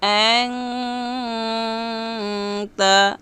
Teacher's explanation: গুন্না করার সময় জিহ্বার আগা সামনের উপরে 2 দাঁতের গোড়ার সঙ্গে রাখতে হবে, কারণ তায়ের মাখরজ জিহ্বার আগা সামনের উপরে 2 দাঁতের গোড়ার সঙ্গে। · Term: ইকফা